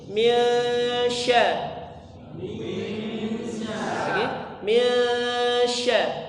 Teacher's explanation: Nun sukunnya bertemu dengan huruf syin maka dibaca samar seperti Eng tapi bukan Eng